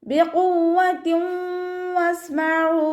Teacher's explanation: തെൻവീനിന് ശേഷം ഇദാം ബിഗുന്നയുടെ അക്ഷരമായിട്ടുള്ള വാവ് വന്നു. തെൻവീനിനെ വാവിലേക്ക് ലയിപ്പിച്ച് ഒന്നയോടുകൂടി ഓതി കൊടുക്കുക കേട്ടോ. സീൻ കൽക്കല ലെറ്ററിലാത്തത് കൊണ്ട് ഹാഫ് സുക്കൂന് കൊടുക്കാൻ ശ്രദ്ധിക്കുക. · ഖാഫ് ഇസ്തിഅലാൻ്റെ ലെറ്ററാണ്, തഫ്ഹീം ചെയ്തിട്ട് ഉച്ചരിക്കുക. വാവിന് ശബ്ദ വന്നിട്ടുണ്ട്, 2 അക്ഷരങ്ങൾ ഉച്ചരിക്കുന്ന കനം കൊടുക്കാൻ ശ്രദ്ധിക്കുക കേട്ടോ. ത കെസ്റ തെൻവീനാണ് വന്നിട്ടുള്ളത്.